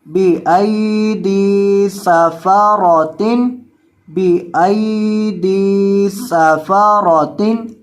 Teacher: اب یہاں آپ نے یہ جو حمزہ ہے اس کے بعد یہ جو یا ہے اس کو آپ نے لمبا نہیں کرنا، کیونکہ یہ جو یا ہے یہ حروف لین کا ہے، حروف مدہ کا نہیں ہے، اور یہ جو دال کے بعد یا ہے یہ یا حروف مدہ کا ہے، اس وجہ سے دال کو لمبا کرنا ہے لیکن حمزہ کو لمبا نہیں کرنا